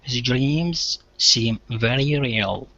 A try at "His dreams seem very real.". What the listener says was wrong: Very. Let's try it again. It hit the top just a little bit.